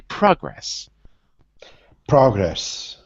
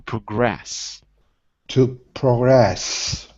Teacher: so as a verb it's on the second syllable